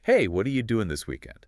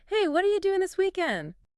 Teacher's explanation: what are you? connects and reduces to sound like would. And doing often loses that final G sound in casual speech becoming doing. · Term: wadaya